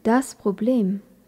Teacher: Dans le mot problème, remarquons que c'est la deuxième syllabe qui est accentuée. C'est souvent le cas quand on a un mot qui vient du français.